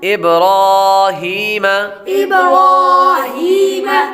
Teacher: را پر کھڑا زبر ہو تو را کو پر پڑھتے ہیں۔ آگے یا حروف مدہ میں سے ہے، اس لیے اس کو ایک الف یعنی 2 حرکات کے برابر کھینچ کر پڑھیں گے۔ · با حروف قلقلہ میں سے ہے، اس لیے اس کو قلقلہ کریں گے۔ را پر کھڑا زبر ہو تو را کو پر پڑھتے ہیں۔